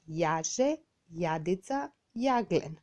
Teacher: карактеристична е појавата на протетичко, односно вметнато ј на почетокот од зборот